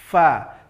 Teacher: ujung gigi seri atas, tempelkan ke bibir bahagian bawah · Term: huruf fa